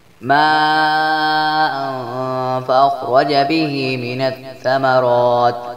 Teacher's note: ماء فأخرج به من الثمرات، ماں پر مد متصل ہے جس لیے اس کو 5 الف کے برابر لمبا کریں گے، اور تنوین کے بعد فا آ گیا جس لیے یہاں پر اخفاء حقیقی کا غنہ ہوگا